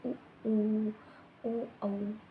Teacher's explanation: ऐसे शब्दों को सॉरी ऐसे स्वरों को बोलते समय आपके जो होठ है वो कैसे हो जाते हैं वृत मुखी यानी कि गोल हो जाते हैं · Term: व्रतमुखी